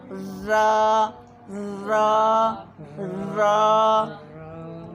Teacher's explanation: زبان کا جو یہ ٹپ ہے نا کنارہ، اس کی نیچے والا حصہ لگ رہا ہے مسوڑوں سے، اوپر والے دانتوں کے مسوڑوں سے